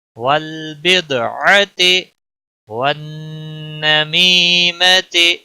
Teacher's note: دال پر قلقلہ ہوگا، لام کو ہلانا نہیں